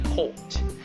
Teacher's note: you don't pronounce the r but prolong the o sound like port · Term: british accent